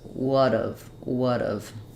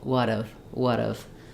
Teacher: unreleased T because we don't have a consonant that's following it it becomes a flap it sounds more like a d